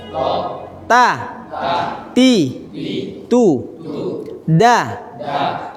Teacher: ujung lidah ditempelkan di belakang gigi seri atas ini gigi seri belah di belakangnya